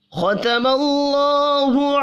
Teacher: ختم اللہ خا پر پڑھا جائے گا، اللہ کا نام میم کے اوپر زبر کی وجہ سے پر پڑھا جائے گا